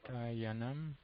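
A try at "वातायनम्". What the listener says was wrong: Yeah.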